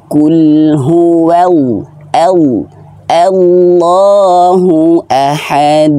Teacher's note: lafaz Allah ini tebal tapi tidak boleh manyun